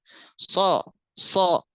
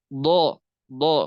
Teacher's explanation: yang menyebabkan bunyi itu tebal adalah pangkal lidahnya naik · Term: istilla